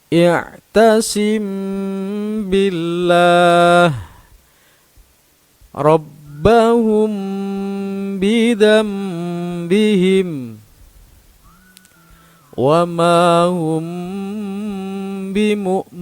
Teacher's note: Jadi ikhfa syafawi itu artinya apabila ada mim sukun bertemu dengan huruf ba. Cara membacanya yaitu suara mim sukun disamarkan disertai mendengung. Ada tekanan kira-kira 1 alif atau 2 harokat.